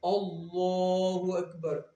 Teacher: اللہ کے نام کے اوپر کھڑا زبر بھی ہے، اس کو ہم 2 سیکنڈ کے لیے کھینچ کے پڑھیں گے۔ کھڑی حرکات کو 2 سیکنڈ یعنی 1 الف یعنی 2 حرکات کے برابر ہم کھینچ کے پڑھیں گے۔